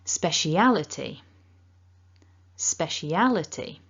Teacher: the primary stress is on syllable three al so that's the strongest stress and then we've got a second slightly weaker stress on smash · So you can see a little blue mark on the left before spec, and that tells us that that is the secondary stress because it's at the bottom, which means it's slightly weaker as a stress. And you can see that the primary stress is on syllable 3, al. So that's the strongest stress, and then we've got a second slightly weaker stress on spec. So this word kind of goes up and down a bit like a roller coaster. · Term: double word stress